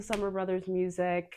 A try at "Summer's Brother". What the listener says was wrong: People mix up the S. Sometimes it like it jumps around.